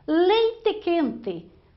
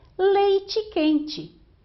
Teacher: Leite quente, fala-se com E no interior do Paraná e de São Paulo, enquanto que nos outros estados brasileiros a pronúncia é leite quente